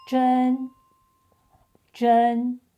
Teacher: In this case, the pronunciation shifts slightly — the initial and final sounds stay the same, but the tone changes from the third to the first.